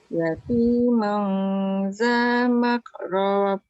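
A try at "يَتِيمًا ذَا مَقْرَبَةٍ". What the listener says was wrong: Tebal sikit. Yatiman, man tu nipis, jangan mau, jangan tebal. Yatiman za maqrabah.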